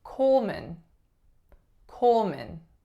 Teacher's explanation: The first vowel is O, goes right into a dark L. The second syllable is not man, it's min, min. So M, schwa, N. Coleman, Coleman.